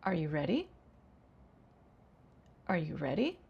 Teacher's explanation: That is a yes/no question, and I used rising intonation.